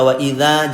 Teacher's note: ketika kita baca wa idza jangan pendek, namanya mad asli, itu 2 harokat